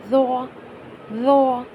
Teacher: ذوا یہ موٹے حروف میں آتا ہے، تو موٹے حروف میں آتا ہے پر زبان کی نوک سامنے والی دانتوں کے کنارے پر لگے گی اور منہ کے اندر ایک ہوا سی بھرے گی، تو ذوا، ذوا۔